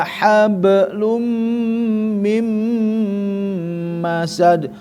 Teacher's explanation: Lum masuk ke mim ya guna musyaddadah dengung. Mim juga idgam bigunah masuk mim bertasdid tahan alkhaisum rongga hidung